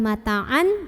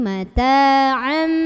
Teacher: ketika ketemu sama ba bunyinya jadi bunyi mim sukun, jadi am. Jadi bukan mata'an tapi mata'am. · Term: iqlab